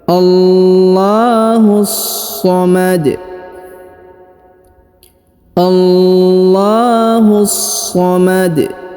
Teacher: kemudian huruf dalnya lagi disukunkan karena dia disukunkan maka kita baca Qalqalah atau dipantulkan ya huruf dalnya dibaca pantul allahus somomad allahus somomad kemudian perhatikan